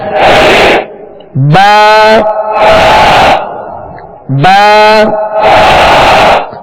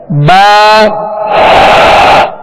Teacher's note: با کا جو مخرج ہے دونوں ہونٹوں کے تر حصے سے یہ ادا ہوتا ہے، دونوں ہونٹوں کے تر حصے سے ادا ہوتا ہے.